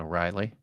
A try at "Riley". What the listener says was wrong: It's not an O'Reilly, it's a Riley. Riley. There's no O. Riley.